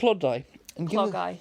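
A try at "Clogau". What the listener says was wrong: No D.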